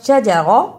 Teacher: زبر زیر پیش کو جلدی پڑھتے ہیں، اسے شجارہ ایسے نہیں پڑھنا